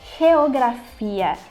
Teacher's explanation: basicamente como se a gente tivesse um RR antes da vogal ri tipo como se você tivesse assoprando mesmo